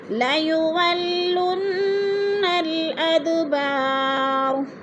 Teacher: جیسے وَلَئِن نَصَرُوهُمْ لَيُوَلُّنَّ نون مشدد ہے، غنہ کریں گے، سختی سے جما کر پڑھیں گے. ادبار، اد پہ قلقلہ ہو رہا ہے، دا ساکن ہے اور حروف قلقلہ میں سے ہے تو ہلا کر پڑھیں گے. بار، با پہ جو ہے الف مدہ، الف مدہ کو ایک الف دو حرکات کے برابر لمبا کر کے پڑھنا ہے.